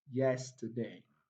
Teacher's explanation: T and day contains weak vowel sounds, so they are not stressed. The two syllables, the last two syllables are not stressed, so the stress falls on yes, yesterday.